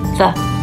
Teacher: So we put the tongue underneath our upper front teeth